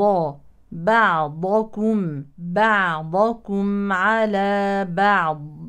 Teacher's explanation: والميم ساكنه هنا تظهر اظهار شفوي ننتبه هنا لترقيق الباء والعين لا نقول بعضكم على بعض لا · مع الاهتمام بتوسط العين الساكنه